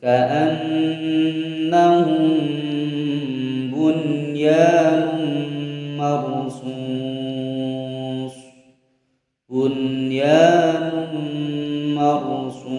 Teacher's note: Selanjutnya pada surah As-Saff ayat 4 terdapat kalimat bunyanun, nun sukun berhadapan dengan huruf ya dalam satu kalimat, harus dibaca dengan jelas